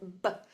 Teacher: when you make a B sound, what happens with your lips at the beginning? They close